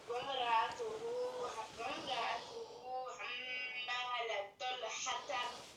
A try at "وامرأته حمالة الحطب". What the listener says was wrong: Non, lui là, c'est pas un to, c'est ta. Hamalata, et lui c'est to. Fais attention. Wamra'atuhu hammalatal hatob. Lui c'est ta et lui c'est to. Tu vois la différence?